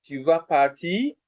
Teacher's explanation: so I've raised my voice at the end of it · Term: intonation